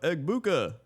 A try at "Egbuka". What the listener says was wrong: And also his last name's pronounced Abuka. There's no G in it. Just Abuka. there is a G, yeah, but he doesn't pronounce it though. Abuka.